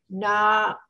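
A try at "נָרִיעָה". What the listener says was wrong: Not ra. It's a one dot. Nari.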